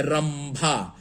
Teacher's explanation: उसी तरीके से देखिए रंभा, अब यहाँ बिंदु है और अगला वर्ण भ है और ये पवर्ग का है, तो पवर्ग का है और इस अनुस्वार के उच्चारण में मुंह बंद है, तो हम र और यहाँ अनुस्वार का अंग्रेजी ए एन न होकर के ए एम हो जाएगा।